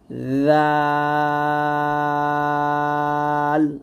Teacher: জালটা খুবই সতর্কভাবে বলতে হবে, জিহ্বাটা সামনের উপরের মানে জিহ্বার আগা সামনের উপরে 2 দাঁতের আগার সঙ্গে লাগিয়ে জালটা আমরা পাতলা করে উচ্চারণ করব। সাবধান থাকতে হবে যেন জিহ্বাটা কোনোভাবেই নিচে যাতে না লাগে।